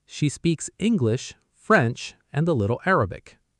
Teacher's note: Rise on English, rise on French, fall on Arabic. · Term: the list pattern